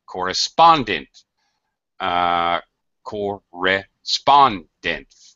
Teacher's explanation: the third syllable gets the stress